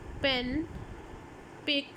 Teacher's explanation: for example, अगर मैं पेन बोल रही हूँ, पेन, पिक, तो इसमें अगर प साउंड बोल रही हूँ तो मैनर क्या है कि मैं दोनों लिप्स को क्लोज करती हूँ, एक इंट्रा ओरल प्रेशर बिल्ड करती हूँ बिहाइंड द लिप्स